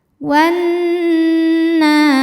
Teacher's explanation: Cara bacanya dipanjangkan nunnya ini 2 harokat. · Wan Nunnya dihukumi dengan gunnah musyaddadah karena nun bertasydid. Cara bacanya didengungkan. Tahan dengungannya kurang lebih 2 harokat. Wanna, na mad tabi'i muqaddar sebab nun berharokat fathah panjang.